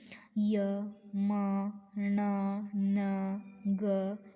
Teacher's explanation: य म ण न ग यांच उच्चारण कुठून होतंय नाकातून होतंय म्हणून त्याला नासिका म्हणतात